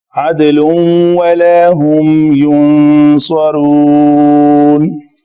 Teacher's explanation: یؤخذ، یؤخذ منها عدل، عدل، عدل، ولا، دال کے اوپر جزم ہے تو اس کو یہاں پہ کلکلا کریں گے۔ آگے تنوین کے بعد واو ہے، حروف یرملون میں سے یہاں پہ ادغام ناقص ہوگا